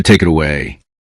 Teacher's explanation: This may sound like talk away. The final sound of take joins it, and the final sound of it joins away.